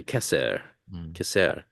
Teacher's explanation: ashkanazi would say CER CER right an S instead of a t sound for Tav